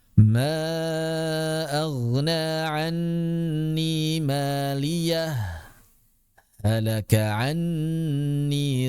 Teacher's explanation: Yang pertama as-saktu ma'al izhar, pakai saktah. Berarti kalau saktah ya izhar, enggak di idgham.